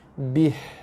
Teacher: Tekan pada ba, lepaskan dengan baris ba, ha mati.